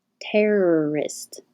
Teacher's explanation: your tongue curls back into the r position and hold it there while you make the second er